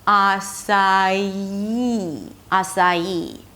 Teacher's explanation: ah-sa-(y)ee. And when we connect the 'sa' with the 'ee' we get a little bit of a 'y' sound - açaí, açaí.